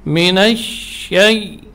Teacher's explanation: Tafasyi makna intisyarur rih, menyebarnya udara di mulut.